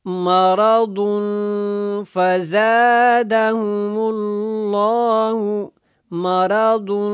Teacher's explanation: مرض فزادہم اللہ، مرض، دن کے اوپر بھی اخفا کرنا ہے، اور ضاد کو موٹا بھی پڑھنا ہے